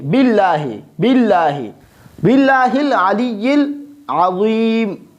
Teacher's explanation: جو لفظ اللہ ہے اس پہ زیر داخل ہوا ہے لہذا ہم اس کو باریک پڑھیں گے